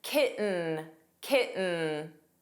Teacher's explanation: The T in kitten was not pronounced.